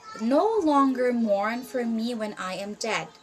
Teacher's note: first unstressed syllable followed by a stressed syllable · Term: iambic pentameter, iambic feet